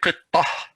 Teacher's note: if I'm going to stop, I'm going to say qittah. I'm not going to say qittatu. No, if I'm going to stop, I'm going to say qittah.